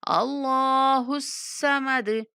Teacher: اللہ کو موٹا کر کے اللہ کلام کو پڑھیں گے کیونکہ اس سے پہلے زبر والا حرف ہے۔ حصہ صاد کو بھی موٹا پڑھیں گے اور دال پر قلقلہ کر دیں گے